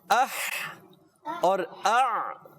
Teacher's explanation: 2 حروف ادا ہوتے ہیں حلق کے درمیان والے حصے سے. حلق کا درمیان والا حصہ, درمیان یہ سمجھ لیں کہ ہمارے حلق کے گردن کے درمیان میں ایک ابھرا ہوا حصہ ہوتا ہے, یہ ہاں یہ درمیان میں ہوتا ہے. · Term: ہا اور عین